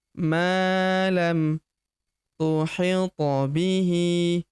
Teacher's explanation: Ma huruf ma kita panjangkan dua harakat karena terdapat tanda alif di depannya yang ini. Maam thit huruf th berharakat sukun kita pantulkan atau kita qalqalahkan · Huruf to berharokat sukun kita pantulkan atau kita qalqalahkan